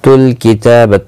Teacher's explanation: ता के ऊपर खड़ी ज़बर है, एक अलिफ की मिकदार के बराबर खींच कर पढ़ेंगे